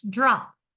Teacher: The P, your hand doesn't vibrate.